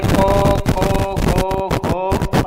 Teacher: જીભનું જે મૂળ કોમળ ભાગ છે એ તાળવાને સ્પર્શ કરીને કંઠમાંથી ધ્વનિ ઉત્પન્ન થાય છે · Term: કંઠ્ય વર્ણો